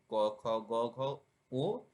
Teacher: ক বর্গীয় ধ্বনি জিভার গোড়ার নরম তালুর পিছনের অংশ স্পর্শ করে